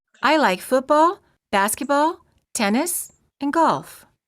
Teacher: لو عندك 4 يبقى rising, rising, rising, and then falling